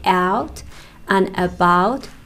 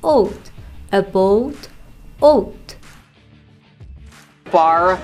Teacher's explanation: they pronounce some two-part vowels known as diphthongs with the higher part of their mouths than people from other english-speaking regions